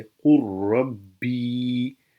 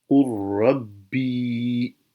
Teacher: ادغام تام، ادغام ہونے کی صورت میں اگر پہلے حرف کی کوئی صفت باقی نہ رہے تو اس کو ادغام تام کہتے ہیں، جیسے قل ربی، یہاں پر دیکھیں لام کی آواز باقی نہیں رہی